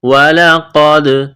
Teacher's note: قاف کو موٹا کرنا ہے، دال کے ساتھ ملانا ہے، دال ساکن ہے تو یہاں پر قلقلہ کریں گے